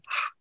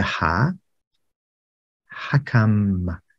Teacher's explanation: sounds in Arabic one is just like the English H but ha is the sound that you make when you're cleaning your glasses it comes from the throat it doesn't have phlegm it's not the sound it's just ah